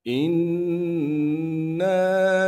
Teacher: حمزہ کو نون سے ملائیں گے اس لیے کہ نون پر تشدید ہے، تشدید ہونے کی وجہ سے نون میں غنہ کریں گے، اور نون کے بعد الف مدہ ہونے کی وجہ سے غنہ کرنے کے بعد نون کو ایک الف کے مقدار کھینچیں گے۔